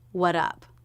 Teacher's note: he dropped the s sound so now the t came between two vowel sounds so is a flap t sounding like a d